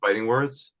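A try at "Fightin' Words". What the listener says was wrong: There's no G in fighting. There's no in fighting. There's an apostrophe there.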